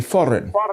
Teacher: He rolls R's between vowels, as in labour land and especially foreign.